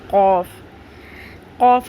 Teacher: آپ کی زبان کی بیک یعنی جڑ کو اوپر ٹکرانا ہے